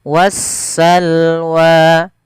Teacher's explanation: Berkebalikan daripada alif lam qamariyah yang dimana lamnya terbaca dengan jelas, sedangkan di alif lam syamsiyah yaitu suara sinnya, suara alif lamnya diidghamkan ke huruf sin sehingga sinnya berharakat tasydid. Maka wassalwa seperti itu.